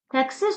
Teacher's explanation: Təqsir sözü ahəng qanuna tabedir, yazılışı və tələffüzü də fərqlənir, təqsir deyə tələffüz edilir. Çünki söz ortasında q samitindən sonra çar samit gələrsə, söz ortasında gələn q samiti k səsini verir.